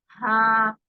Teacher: जब हम हा बोलते हैं तो मुंह से सांस और आवाज साथ साथ निकल आती है। हा, सांस भी निकल रही है हल्की हल्की, और आपको गर्दन पे वाइब्रेशन भी फील हो रही है, जिससे ये पता चल रहा है कि आवाज गुजर रही है।